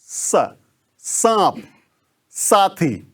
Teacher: और ये वाला, इसको हम दंती स जो बोलते हैं, मतलब इसका मतलब है कि दांत पर दांत रखिए दोनों आगे और सिसकारी लगाइए,